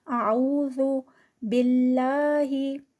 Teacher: इसको जो है वो जू करके बजिंग साउंड नहीं देनी, इसको बहुत सॉफ्ट पढ़ना है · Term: ज़ाल